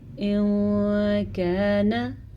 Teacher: نون ساکن کے بعد کاف حروف اخفا میں سے آیا ہوا ہے تو ہم نے نون ساکن کو چھپا کے پڑھا اور غننے کے ساتھ پڑھا